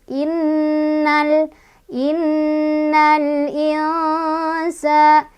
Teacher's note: Cara bacanya nun sukun dibaca samar sambil berdengung, sambil mulut kita mempersiapkan untuk ke huruf sin. Jadi dari ketika mengucapkan nun yang samar itu kita sudah siap-siap ke huruf sin sambil berdengung. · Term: ikhfa ausat